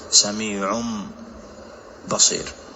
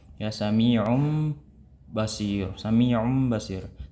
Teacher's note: نظهر شيء من هذه الغنة على الشفتين، فما نطبق الشفتين تماما عند الإقلاب